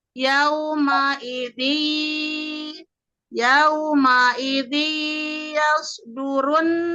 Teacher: di situ ada tanwin kasrah bertemu huruf ya. Di situ dengungkan Bunda.